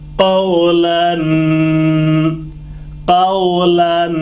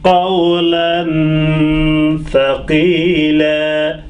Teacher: lan through the nose, and I'm pausing couple of seconds. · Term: tanween